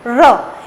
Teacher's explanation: र आप जब बोलते हो तो आपकी जीभ एक बेलनाकार आकृति में घूम जाती है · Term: लुंठित वर्ण